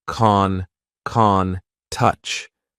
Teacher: We just have the long A vowel sound, like in car, and then the N sound